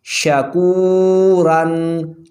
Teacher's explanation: شین زبر شا، کاف واو پیش کو، شکو، را 2 زبر رن، شکورن، واو ساکن سے پہلے پیش، واو مدہ، را پر 2 زبر آ رہی ہیں تو یہ را موٹا پڑھا جائے گا